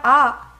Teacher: Then you have A, which is a throat letter.